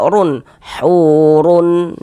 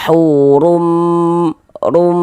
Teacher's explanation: Dengan cara memasukkan. Jadi bunyi nun sukun atau bunyi tanwinnya itu dimasukkan ke dalam huruf idgham bi gunnahnya. Kemudian disertai dengan dengungan, disertai dengan gunnah